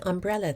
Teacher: In the word umbrella, it is the second syllable that carries the vocal stress.